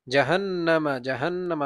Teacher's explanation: নুনের উপরে তাসদীদ ওয়াজিব গুন্না, গুন্না হবে জাহান্নামা